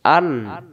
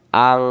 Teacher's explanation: নুন সাকিনের বাম পাশে আইন অক্ষর হলো ইজহারের অক্ষর, এই জন্য আং গুণনা করা যাবে না। আন, তাহলে নুন সাকিনের বাম পাশে আইন অক্ষর পাইলে নুন সাকিন ইজহার করে পড়তে হয়।